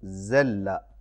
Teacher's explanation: मसलन ज़ाल की आवाज़ बारीक और नरम होती है, जैसे ज़ल्ला, और इसका माना है वो ज़लील हुआ, और ज़ा की आवाज़ बारीक और सीटी वाली होती है